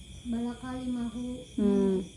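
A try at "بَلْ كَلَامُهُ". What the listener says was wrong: kala. Bukan kila ya, kala.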